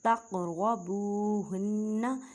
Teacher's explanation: قاف ساکن ہے تو کلکلہ کریں. کلکلہ کا مطلب ہے ہلا کر پڑھنا